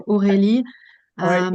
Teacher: it's a French R, not rolled. It's more from the back or of the throat.